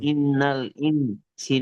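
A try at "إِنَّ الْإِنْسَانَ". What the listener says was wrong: গুণনাটা একটু বেশি করে দেন। ইন, এটাও গুণনা আছে, ইখফা আছে, হরফে তানবিন থেকে পর সিন এসছে।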